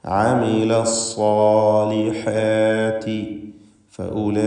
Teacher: നിർബന്ധമായും 4-5 ഹറക്കത്തിൻ്റെ അളവിൽ അലിഫിനെ ദീർഘിപ്പിക്കുക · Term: മദ് മുത്തസിൽ വാജിബ്